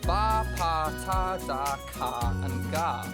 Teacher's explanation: Plosives, also known as stops, stop the airflow entirely. The pressure is built up behind the articulators and eventually released in a small explosion of air.